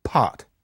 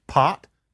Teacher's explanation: Now, in both cases, you've got a P. But when you say pot, if you put your hand in front of your face, you feel a puff. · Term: aspiration